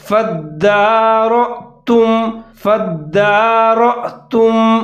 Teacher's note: آگے را کے اوپر زبر ہے، موٹا کر کے پڑھنا ہے اور حمزہ کے ساتھ ملا کر پڑھنا ہے، حمزہ ساکن ہے اور جھٹکے کے ساتھ پڑھنا ہے · نفسا فَادَّارَأْتُمْ فا کو دال کے ساتھ ملا کر پڑھنا ہے، دال مشدد ہے اور دال کے اوپر کھڑا زبر ہے، ایک الف کے برابر لمبا کر کے پڑھنا ہے